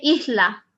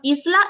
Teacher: s is after a vowel in this case the a but when you have the s before a consonant then you can um do this h sound instead of the s